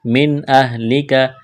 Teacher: نون ساکن پر غنہ نہیں کریں گے، آواز ناک میں نہیں چھپائیں گے